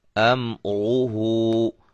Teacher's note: میم کو ہلائیں گے نہیں، میم کو ہلانا نہیں ہے، کیوں کہ یہ حروف قلقلہ میں سے نہیں ہے